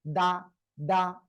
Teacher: জিহ্বার আগা দুই দাঁতে গোড়ায় লাগাতে হবে